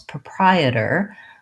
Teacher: is a flap T when it's between these two vowels proprietor Americans will say that T sound without the puff of air